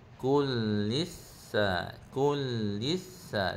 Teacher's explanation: lis tu bacaan nipis dibaca hujung lidah.